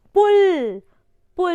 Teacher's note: यहाँ पे आपका जो वर्ड है वो ऊपर की तरफ जा रहा है. पुल लॉन्ग हो जा रहा है, लंबा.